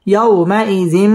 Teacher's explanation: ইয়াও জবরের বাম পাশে জজম ওয়ালা ওয়াও লিনের হরফ তাড়াতাড়ি পড়তে হবে